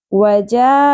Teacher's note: ये मद्दे मुत्तसिल है, 5 अलिफ के बराबर खींचेंगे क्योंकि सबब मद्दा हमजा एक ही कलिमा के अंदर आ गया